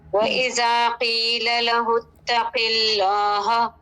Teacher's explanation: لام اسم جلالہ میں دیکھیے کیا یہ لام پور ہوگا یا باریک ہوگا؟ یہ باریک ہوگا کیونکہ اس سے پہلے زیر آ رہا ہے